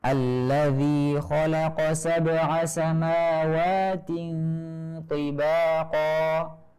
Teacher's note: Di situ ada huruf ta kasroh, kemudian setelahnya ada huruf to kasroh juga. Jadi kita harus menebalkan huruf to-nya dan menipiskan huruf ta-nya sehingga terdengar benar-benar jelas perbedaan antara kedua huruf ini.